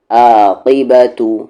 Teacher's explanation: عین کا مخرج مڈل تھروٹ سے